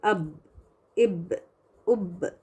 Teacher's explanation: ساکن با کو تھوڑا سا اس کو باؤنس کرنا پڑتا ہے، جھٹکا نہیں، اب اس طرح سے نہیں، تھوڑا سا باؤنس دے، ایکو جیسی نا آواز آنی چاہیے، اب، اب، اب۔ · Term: قلقلہ